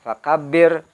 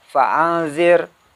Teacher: Jadi mengucapkan ro-nya tipis aja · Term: ro dibaca tarkik